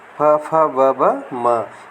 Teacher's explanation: प वर्ग फ, फ, ब, म, यानी इसमें प वर्ग में होठों, दोनों होठों की स्थिति मिलती है।